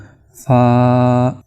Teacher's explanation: جب آپ اوپر والے دو دانتوں کو نیچے والے جو ہونٹ ہے اس کے ساتھ ٹکرائیں گے لگائیں گے فا تو اس وقت یہ ادا ہوگا